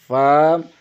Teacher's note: ثنائے علیہ کا سرہ نیچے والے ہونٹوں کے اندرونی حصے سے لگے تو فا ادا ہوتا ہے